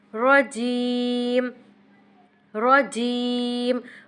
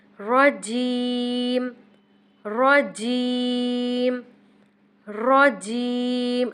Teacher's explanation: را کو پر پڑھنا ہے اور جیم کو کھینچنا ہے۔ رجیم، رجیم، رجیم، را باریک نہیں ہونا چاہیے، رجیم نہ ہو۔